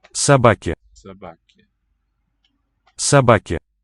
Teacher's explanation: So I think they're accented on the middle syllable.